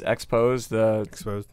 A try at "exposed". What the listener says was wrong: It's just Z. EXPOZZZZ. Where you keep putting a D on it.